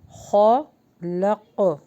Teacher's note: میں یہاں پر اخفا کیجیے، میں شر ری ما خلق، لق، قاف کو باؤنس بیک کریں کیونکہ قلقلہ ہوگا یہاں پہ